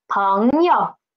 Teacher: And U is neutral tone. Neutral tone. We need to read it soft and quick.